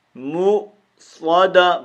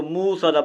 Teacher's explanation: اور مؤصدہ یہ یہاں پر حمزہ ہے، واو نہیں ہے، تو میم کو ہم نے کھینچ کے مارنا ہے، اس حمزہ کے اوپر جھٹکا دینا ہے